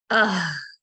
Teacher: जब मैं सुकून के साथ पढ़ती हूँ तो आवाज़ थोड़ी देर जारी रहती है, चूँकि वो रख़ावा की सिफ़्त है।